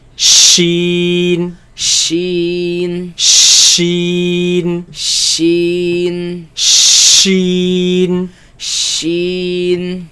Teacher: Now this comes from the middle of the tongue, against the middle of the upper palate.